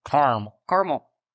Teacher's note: So what's interesting is that the western half of this country apparently pronounces it with 2 syllables, completely ignoring the second A and saying Caramel.